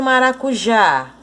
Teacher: A sílaba tônica de maracujá é o já.